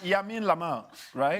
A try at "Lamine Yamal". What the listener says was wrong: not Yamin. It's Lamine Yamal. You keep saying Yamin Lamal. Lamine Yamal.